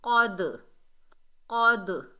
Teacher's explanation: گے، قاف حروف استعلا میں سے ہے، موٹا ادا ہوگا، اور دال حروف کلکلہ میں سے ساکن حالت میں آ رہا ہے تو دال کی ڈبل ساؤنڈ آئے گی ، کلکلہ پیدا ہوگا، کلکلہ صغریٰ، ویک کلکلہ، چھوٹا کلکلہ، جیسے · زبر، آگے دال ساکن ہے، قاف کو دال سے ملائیں گے، قاف حروف استعلا میں سے ہے، موٹا ادا ہوگا